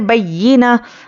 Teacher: या पर तजदीद है तो सख्ती से पढ़ेंगे बय्यिना। अब यहाँ पर गोलता है, यहाँ पर आयत है, तो हम क्या करेंगे, आखिरी हर्फ पर जज़म देकर सांस तोड़ेंगे।